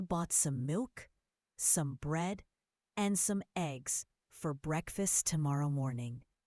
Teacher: Hear how I paused at the commas? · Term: thought grouping